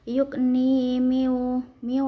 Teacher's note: Cara bacanya samar sambil berdengung. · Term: ikhfa ausat